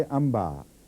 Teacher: वो नून लफ्ज़न है अलिफ नून बे अलिफ और बाद में हमज़ा, लेकिन जब आप पढ़ते हैं इसको तो अम्बा आप पढ़ते हैं, अन बा भी नहीं पढ़ते और अम बा भी नहीं पढ़ते, दोनों के बीच बीच में एक लफ्ज़ है।